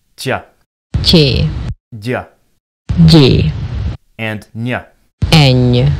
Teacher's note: An overly simple way of describing these sounds is to say that they sound like the consonant followed by a y sound. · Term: palatalized consonants